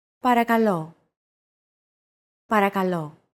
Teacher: Don't forget that words get accentuated in Greek, so make sure to stress that final syllable with the accent mark.